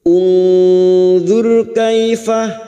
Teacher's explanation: ra sukun yang didahului dhammah kita baca tafkim. · Nun sukun bertemu dha, ikfa hakiki. Kita samarkan bunyi nun sukun dan mendengung selama 3 harokat.